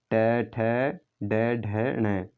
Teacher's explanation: अगर ट की बात करें तो ट दोस्तों मूर्धा से बोला जाता है। जो ट वर्ग है, ट के अंतर्गत आते हैं ट, ठ, ड, ढ, ण, तो वो दोस्तों मूर्धा से बोले जाते हैं, ठीक है ना, ये भी आपको पता होना चाहिए, मूर्धा से बोले जाते हैं, ठीक है ना।